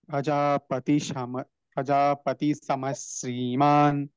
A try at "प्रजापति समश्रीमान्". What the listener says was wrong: ಅಲ್ಲಿ ಶ್ರೀ ನೀವು ಹೇಳಿದಾಗ ಸ್ವಲ್ಪ ಸ್ಟ್ರೆಸ್ ಬೇಕಾಗುತ್ತೆ ಪ್ರಜಾಪತಿ ಸಮಶ್ರೀಮಾನ್